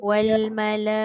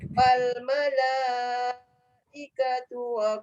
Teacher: Wal mala paling kurang 4 harakat.